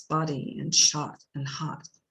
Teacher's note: Also, we have this particular vowel like in shot and hot and body, which is more of a low vowel. It's a mid-low vowel, which is back, but it is more of a central nature in American English